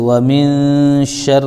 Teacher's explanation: نون ساکن کے بعد حروف اخفا میں سے شین آ رہا ہے تو ایک الف ناک میں روکیں گے آواز کو ہم. تو ومن شین کے اوپر زبر ہے لیکن را تشدید ہے تو شین کو را ملا دیں گے جیسے ومن شر را کے نیچے زیر تو ری.